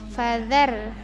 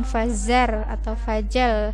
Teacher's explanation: ini huruf zal di ujung lidah ya. Fadzar pakai di ujung lidah, bukan fazar atau fajar, salah ya.